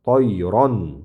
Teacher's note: Ya'ni toyro deb cho'zmaymiz buni. Bu o'qilmaydi bu. Ya'ni har qanday harf o'sha fathalik bo'lib va tanvinlik bo'lganida undan keyin bitta alif orttiriladi.